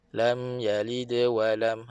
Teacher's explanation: dal lantunkan. Okey, lantunkan dengan ringan tanpa menambah hamzah mati